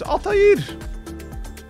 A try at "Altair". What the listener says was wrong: What's that sound you're making at the end? That sounds like an H.